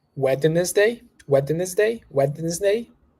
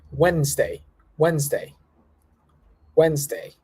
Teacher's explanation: you cut the letter D there you don't pronounce the d